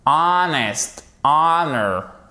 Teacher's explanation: pensez bien au fait que c'est une voyelle longue et ça va vous empêcher de faire le H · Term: Pas de H